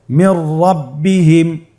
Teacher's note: নুন সাকিনের পরে যদি র হরফ আসে তাহলে নুন সাকিনকে পরবর্তী হরফের সাথে মিলিয়ে গুন্না ছাড়া পড়তে হবে। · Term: ইদগামে বিলা গুন্না